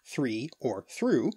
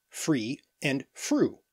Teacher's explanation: a dental fricative produced with the tongue and teeth becoming the labial dental fricative in some dialects of English and being pronounced as free and fruit which is viewer unknown